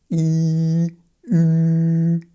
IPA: y